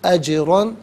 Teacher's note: جیم ساکن ہے لیکن یہاں پر بھی قلقلہ کیا جائے گا، را پر 2 زبر کی تنوین ہے، اسے پر کر کے پڑھا جائے گا · اجرن میں جیم ساکن ہے لیکن یہاں پر بھی قلقلہ کیا جائے گا